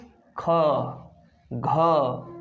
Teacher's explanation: अधिक सांस आना चाहिए, अधिक सांस लगना चाहिए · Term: महाप्राण